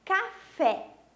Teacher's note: que tem a última sílaba tônica por exemplo a palavra café o fé é a minha sílaba tônica minha última sílaba da palavra Então ela é oxítona